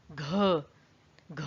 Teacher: अंदर से पूरा बल निकलता है उसमें, तो ये महाप्राण होती है